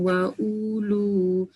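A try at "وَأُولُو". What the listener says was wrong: Tak panjang ulunya. Wa ulu gitu.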